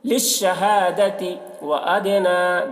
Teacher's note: دال میں قلقلہ کریں گے، دال حروف قلقلہ میں سے ہے